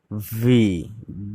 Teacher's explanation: ভি উচ্চারণ হবে এফ এর মতোই, নিচের ঠোঁটের সাথে উপরের দাঁতের পাটি এসে মিলবে